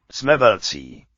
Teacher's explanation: Jsme velcí. C, and the C is a ts, even with the following E, not vowelized.